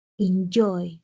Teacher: lleva mayor fuerza de voz en la última sílaba